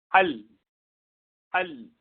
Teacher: زبان کی نوک اوپر لگتی ہے وہاں سے تو نہیں نکلتی، لیکن سائڈ سے نکل جاتی ہے، تو اس لیے یہ مخرج اگرچہ بند ہو جاتا ہے، جیسے با میں نکلتا ہے بند ہوتا ہے، لیکن اس میں زبان سائڈ سے کھلی رہتی ہے تو آواز وہاں سے نکل جاتی ہے۔